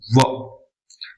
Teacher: व जो है अर्ध ओष्ठ और दंत का उपयोग उसमें हो रहा है इसलिए थोड़ा विशिष्ट भी हो जाता है।